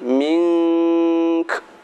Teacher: Nomor 19, kita waqaf disertai dengan dengung dan disertai dengan hamas atau desis, yaitu seperti bacaan pada minka. Minka ketika berhenti mink, min dibaca dengung